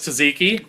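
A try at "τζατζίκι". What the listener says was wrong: It's Zaziki. Z. The T is a Z.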